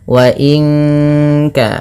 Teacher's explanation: Nun mati bertemu kaf, suaranya disamarkan ke kaf ya, terdengar bunyi wa inka langsung kepada makhraj huruf ka yang dimana kaf makhrajnya pangkal lidah, kita di pangkal lidah, maka bukan wa inka tapi wa inka.